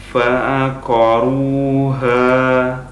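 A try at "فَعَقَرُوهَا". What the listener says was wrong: Nah, kemudian kita tipiskan. Punya antum masih tebal haknya. Ha, harusnya ha.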